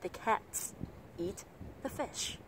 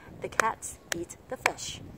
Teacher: Các bạn sẽ không đọc là the, không kéo dài ra, mà các bạn sẽ đọc nhỏ đi.